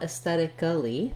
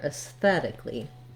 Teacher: in reality, we only add one syllable. We just add the sounds li, an L and an E sound. So you don't want aesthetically, but rather aesthetically.